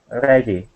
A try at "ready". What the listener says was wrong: Good, nice job.